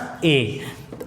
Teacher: ए और ऐ, इन दो वर्णों का जो उच्चारण स्थान है वो कंठ तालु है